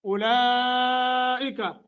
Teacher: مد متصل ہے، اس کو 2.5 الف سے لے کے 3 الف تک کھینچ سکتے ہیں